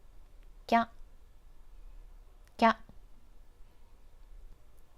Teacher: For example, ki is combined with small ya to get kya, kya. You need to say ki and ya together very quickly to form them into one character. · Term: compound hiragana